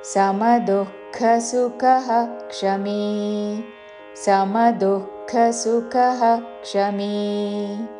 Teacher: విసర్గ తర్వాత క్ష తో అక్షరం ఉన్నది కాబట్టి విసర్గ ఉచ్చారణ పూర్తిగా చేసి క్షమి అని పలకాలి